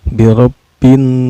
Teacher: ro-nya ini dihukumi tafkhim atau tebal ya. Karena ro berbaris patah ya.